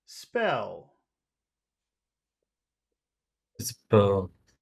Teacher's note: the way that we'll have to say this word is we'll start high and then we'll go low.